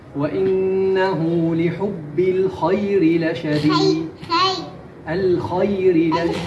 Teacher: حرف الخاء يجب أن يكون مفخم